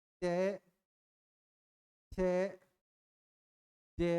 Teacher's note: घर्षण पैदा होता है, इसलिए स्पर्श संघर्षी व्यंजन कहा जाता है चय वर्ग को